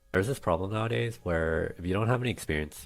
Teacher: the vocal fry the lack of cadence the lack of intonation in his voice